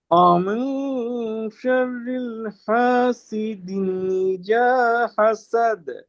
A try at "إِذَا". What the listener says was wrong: ইজা হয়ে গেছে, ইজা জালটা পাতলা হবে।